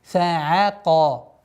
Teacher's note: айн мягкая. И не подчиняется твердости каф. Фаака, айн мягкая, каф твердая.